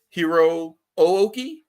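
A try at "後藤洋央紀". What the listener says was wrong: No, it would be Hiroki. because sometimes with vowels in the Japanese language, they'll leave. It'll be there, but it'll be silent. Do that with a lot of U's, like with Asuka. But yeah, Hiroki Goto.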